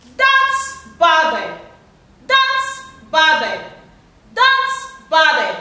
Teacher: So the first syllable is stressed, the second is stressed, and the third is not stressed.